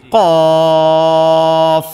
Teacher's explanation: তবে কফের উচ্চারণটা মোটা হয়। মোটা প্লাস জিহ্বার গোড়া। লেখেন মোটা, যাতে আবার কেউ কা না বলে।